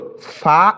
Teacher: খেয়াল করুন, এটা হচ্ছে ঠোঁটের পেট। এই ঠোঁটের পেট থেকে সামনে যে উপরে দাঁত রয়েছে, 2 দাঁতের আগার সঙ্গে লাগাইয়া ফা উচ্চারিত হয়।